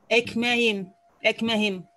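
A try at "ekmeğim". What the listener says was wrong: Правильно.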